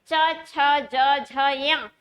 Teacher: जो आपकी जीभ का मध्य भाग है, जो बीच वाला भाग है, वो आपके जिन्हें आप मसूड़े कहते हैं, उस स्थान को स्पर्श हो रहा है, यानी तालु को स्पर्श हो रहा है। तो इन वर्णों को हम कहते हैं तालव्य वर्ण।